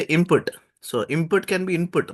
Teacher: n can be pronounced as M as well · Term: assimilation